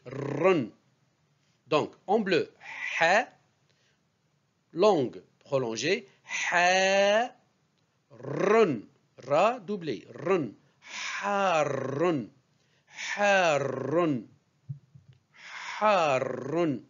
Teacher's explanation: le R est roulé plusieurs fois